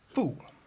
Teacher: a sort of sharp downward intonation it's the fourth tone in Chinese